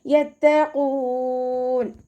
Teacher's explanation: ഖാഫ് ഇസ്തിഅലാൻ്റെ ലെറ്ററാണ്, സൗണ്ടിനെ heavy ആക്കിയിട്ട് ഉച്ചരിക്കുക